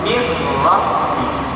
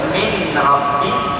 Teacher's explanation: nun ini terus dimasukkan ke dalam huruf ra, seolah-olah tidak wujud huruf nun ini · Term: idgham bila gunah